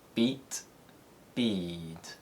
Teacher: all vowels are shortened before unvoiced consonants so the e sound in beat sounds slightly shorter than the e sound in bead